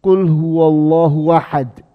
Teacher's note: Tapi di saat kita membacanya dengan bacaan Warsh, Qul huwallahu ahad, hamzahnya hilang. Sehingga wahad.